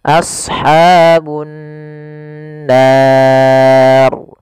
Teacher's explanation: Cara membacanya yaitu menahan suara gunnahnya, tidak langsung. Misalkan ashabun nar, harusnya ditahan dahulu.